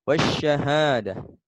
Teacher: alif lam nya tidak terbaca karena disitu ada tajwid maka hukum bacaannya adalah alif lam syamsiah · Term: alif lam syamsiyah